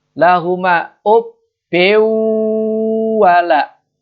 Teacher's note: lam bertemu lam, itu idgham bila gunah, tidak tahan